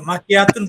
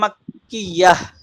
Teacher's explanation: থেমে গেলে ওয়াকফ করলে মাক্কিয়াহ মানে তাদেশ তুন আর তুন থাকবে না, ওটা হা হয়ে যাবে